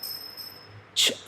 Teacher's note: if you don't release your tongue from the top, ch, only when you release the cha sound comes. But if you don't release, nothing comes out. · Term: stop consonant